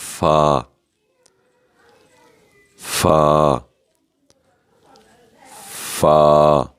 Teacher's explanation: ثناء کے کنارے نچلے ہونٹ پر لگیں گے تو فا ادا ہوگا